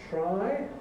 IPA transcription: traɪ